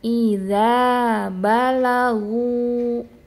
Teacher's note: huruf lamnya jangan lo, jangan ikutan tebal karena huruf ghain huruf tebal.